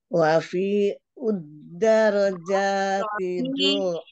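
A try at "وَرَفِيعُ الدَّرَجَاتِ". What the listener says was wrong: Rafi. Ro, enggak ada wau-nya, umro langsung rafi'. Ke dal ya langsung ke dal asyamsiah alif lam asyamsiah rafi' udda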